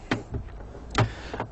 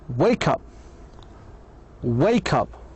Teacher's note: the middle consonant sound is shared so perfectly with both the first and the second words